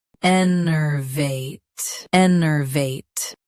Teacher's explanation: Both US and UK have the same pronunciation of this word. Stress -vite. Keep en- and -er short and clear.